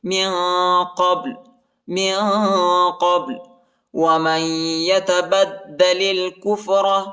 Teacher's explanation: میم کو یا کے ساتھ ملائیں گے، نون نہیں پڑھا جاتا، نون ساکینہ ہے اور ادھر غنہ کریں گے